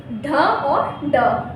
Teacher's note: जीभ ऊपर की ओर मुड़कर अंतिम में मुंह को स्पर्श करते हुए नीचे की ओर आ जाती है। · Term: द्विगुण व्यंजन